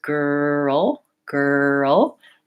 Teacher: making sure I have a tight back R for that girl